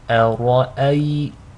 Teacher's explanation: So to recite this correctly, make sure the hamza is light, the ra is heavy, and the second hamza is light.